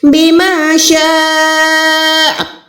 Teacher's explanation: یہاں پر بڑی مد ہے اس لیے میں اس کو 4 سیکنڈ کھینچ رہی ہوں